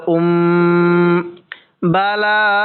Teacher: মিম সাকিনের পরে বা আছে ওই মিম সাকিনের মধ্যে আমরা তখন গুন্না করব যেমনটা এখানে মিম সাকিনের পরে বা আছে এজন্য আমরা এখানে গুন্না